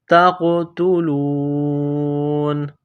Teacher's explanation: جب سٹاپ کریں گے، وقف کریں گے تو نون کو سائلنٹ کریں گے